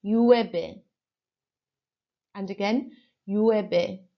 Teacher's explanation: your double L here sounds like a Y and your V is going to sound like a B